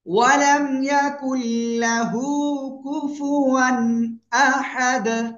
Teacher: থেমে গেলে কি হবে? দাল সাকিন কলকলা হবে।